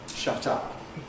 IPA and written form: ˈʃʌt ˈʌp (shut up)